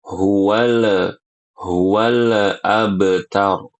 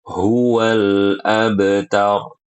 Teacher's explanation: jangan dibaca qalqalah lamnya